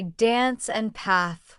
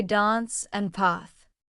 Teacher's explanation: In British English, they use a longer ah sound, like father.